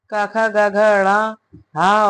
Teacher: कंठ और निचली जीभ के स्पर्श से बोले जाने वाले वर्ण कंठय कहलाते हैं। इस प्रकार की ध्वनियों को कंठय ध्वनियां कहते हैं।